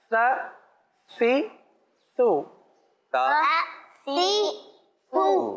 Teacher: سی ٹی کی آواز کیا سا میں آئے گی؟ نہیں آئے گی، بلکہ سانس جاری ہوگا